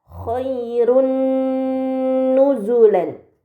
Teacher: harakat dahtain yang bertemu dengan huruf nun ini dinamakan Idam Bun maka domahtain harus dibaca secara melebur dengan gunah yang dipanjangkan